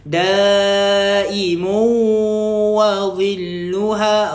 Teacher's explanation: Masukkan dekat waw dengan dengung. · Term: idgham ma'al gunnah